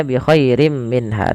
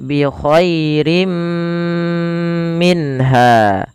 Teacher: Nah, ditahan dulu dua harakat baru dilepas. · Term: idgam bighunah